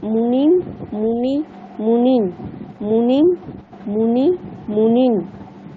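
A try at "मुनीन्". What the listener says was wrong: আপনি কিন্তু মুনিম আর মুনিন দেখুন একই বলে ফেলছেন, কিন্তু এক কি দুটো? মুনিম এখানে কিন্তু হ্রস্ব আছে, কিন্তু মুনিন এখানে কিন্তু দীর্ঘ আছে, তাহলে ওটা একটু টানতে হবে, তাহলে তো পার্থক্যটা বোঝা যাবে। মুনিম এটা হ্রস্ব, মুনি এটা দীর্ঘ, আবার মুনিন এটাও দীর্ঘ, তাহলে মুনিম মুনি মুনিন।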